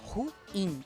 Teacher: Ruim, esse é o certo. Essa é uma palavra oxítona. A gente tem que separar o U do I e ela, a última sílaba é ketônica.